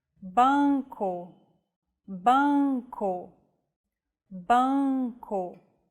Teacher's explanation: you should relax your soft palate and the back of your tongue so the nasal passage is not blocked. It's like humming with your mouth open and adding the vowel sound to it. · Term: nasal vowels